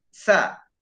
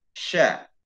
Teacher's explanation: Antara tengah-tengah lidah dan langit-langit. Kalau sa tajam, kalau sya itu banyak angin. Sya di tengah-tengah di tengah-tengahnya ya, antara tengah lidah bagian atas dan langit-langit.